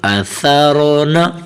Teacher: یہاں سین کی آواز نہیں نکلنی، صاد کی بھی نہیں، اور سا کی اپنی آواز جو ہوتی ہے اثارون۔ اپنی زبان کو اوپر والے دانتوں کے نیچے سے ہلکا سا ٹچ کریں تو سا کی آواز نکلے گی